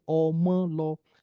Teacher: So if you to mark Omo and law as mid-tone in everything, you're going to be missing the meaning of the word itself, because at this sentence level, the tone is no more mid. It is now mid, high, mid. And the high tone there is actually showing that it is the child that went, making it a sentence on its own.